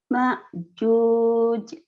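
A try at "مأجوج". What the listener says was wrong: Bukan ain, ini hamzah. Ma'juj. Ma'juj.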